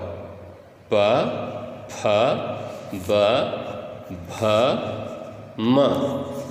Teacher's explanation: उ पवर्ग प फ ब भ म, ये सारे का उच्चारण स्थान ओष्ठौ यानी दोनों ओठों की सहायता से करते हैं हम लोग